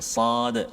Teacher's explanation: Tempat dia, hujung lidah kita diletakkan pada bahagian belakang gigi bawah kita. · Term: huruf sad